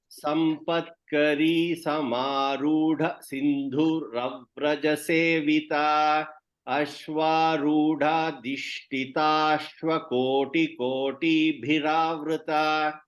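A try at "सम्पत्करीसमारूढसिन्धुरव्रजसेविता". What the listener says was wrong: And no pause after samarudha.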